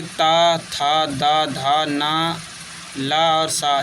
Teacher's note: दांत और जीभ के स्पर्श से बोले जाने वाले वर्ण · दांत और जीभ से बोले जाने वाले ये जैसे कि ता, था, दा, धा, ना, ला और सा ये जो हैं सभी दंत हैं